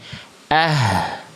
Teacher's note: Karena makhraj yang Bunda lafalkan makhraj hak besarnya ee tidak tepat pada tempat keluarnya. Hak besar itu dilafalkan dari tenggorokan pangkal, tenggorokan paling bawah, tenggorokan paling dalam. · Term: H besar